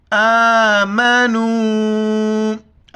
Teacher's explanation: حمزہ کے اوپر کڑا زبر ہے، ایک الف کی مقدار کھینچنا ہے۔ واو کے اوپر مد ہے، نون کو واو کے ساتھ ملائیں گے اور مد کو 4 الف کی مقدار کھینچنا ہے۔